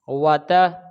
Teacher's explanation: واتا، و، یہ الف مدہ ہے، کیونکہ زبر کے بعد الف آ جائے، حالانکہ زبر اس کے اوپر بھی ہے لیکن اس کے آگے الف نہیں ہے، اس لیے ہم نے اس کو جلدی پڑھا کیونکہ یہ حرکات میں سے ہے اور اس کے اوپر زبر ہے اور زبر کے بعد الف ہے تو یہ الف مدہ ہے، اس لیے ہم اس کو کھینچ کے پڑھیں گے۔ و یہ واو کی ادائیگی کا خیال رکھنا ہے کہ ہونٹ جو اوپر اور نیچے والے ہونٹ آپس میں ملنے نہیں چاہیے، یہاں بھی اور یہاں بھی، ٹھیک ہے جی۔